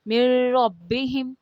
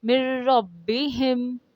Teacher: نون را میں مل گیا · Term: ادغام